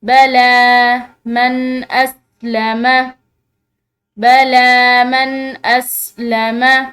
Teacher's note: لام کے اوپر کھڑی زبر ہے تو اس کو ہم نے جو ہے کھینچ کر پڑھنا ہے، یعنی کہ ایک الف کی مقدار جو ہے اس کو ہم نے لمبا کر کے پڑھنا ہے۔